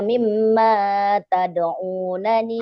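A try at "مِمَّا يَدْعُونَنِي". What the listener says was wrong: Awas, bukan tad'u, kan titiknya di bawah.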